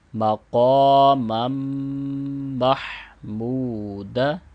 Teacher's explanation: قاف کو موٹا کریں گے اور 2 سیکنڈ پڑھیں گے. میم کو پھر اس میم کے ساتھ ملاتے ہوئے غنہ بھی کریں گے.